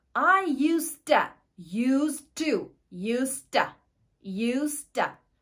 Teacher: ikkita to ulanib boshqacha tovushga aylanib ketyapti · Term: linking and reduction